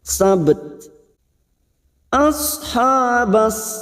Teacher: yaitu memantul sab sab dan ada huruf ta Yang diwakafkan namun huruf ta memiliki sifat hams dan sidah maka pada saat dibaca sukun atau diwakafkan bunyinya sabt ashabbet memantul